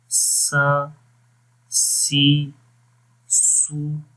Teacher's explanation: سیٹی کی آواز آئے گی، باریک پڑھیں گے